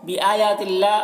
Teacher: اللہ کلام کو باریک پڑھیں گے